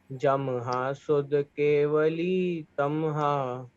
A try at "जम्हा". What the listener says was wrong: जमहा नहीं, जमहा यानी आधा माह। जमहा पढ़ोगे तो पूरा माह हो जाएगा। जमहा ऐसे ही तमहा। जमहा जमहा नहीं, जमहा यानी आधा माह।